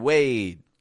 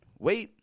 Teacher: not releasing the D just stretching out the a